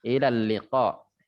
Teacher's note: Tapi bedanya kalau qaf itu agak mendalam, menjorok ke dalam. Sehingga keluarnya udara saat itu tertahan oleh lidah, oleh pangkal lidah kita yang kita tempelkan ke langit mulut.